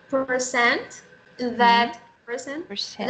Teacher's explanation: person, percent. That is a glottal stop because the T is at the end of the word. Yeah, glottal, 80, glottal stop.